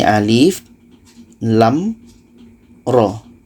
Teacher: a la roh tapi kita baca satu-satu ini alif lam ro Alif pendek lam ini enam harkat roh ini dua harkat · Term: huruf pembuka surat